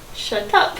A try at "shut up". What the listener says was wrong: No, you're putting an extra in the middle there.